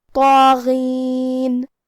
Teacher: اور کیونکہ اس پہ کھڑا زبر ہے تو یہاں مد الف ہے، تو ہم مد الف کو بھی بھاری آواز میں پڑھیں گے. غین کی ادائیگی حلق کے اوپر والے حصے سے ہے. ہمیں حرف الغین کو بھی بھاری آواز میں پڑھنا ہے کیونکہ وہ حروف تفخیم میں سے ہے.